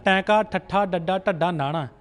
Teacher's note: ਜੀਭ ਪੁੱਠੀ ਕਰਕੇ ਸਾਡੇ ਤਾਲੂ ਨਾਲ ਲੱਗਦੀ ਹੈ